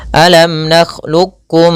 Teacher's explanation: kita idghamkan secara kamilan kepada huruf kaf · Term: idgham mutaqaribain